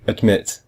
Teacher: the first syllable is add and the second one is mit but we hear mit much more mit is stronger than ad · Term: second syllable is stressed